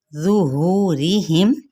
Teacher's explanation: ज़ो हुरूफ़ मुस्तालिया में से है, पुर पढ़ने। हु हा वस्ते हलक से नहीं बल्कि अक्सर हलक से अदा करना, यानी सीने के करीब वाले हिस्से से, और वाव मद्दा का कायदा हो रहा है।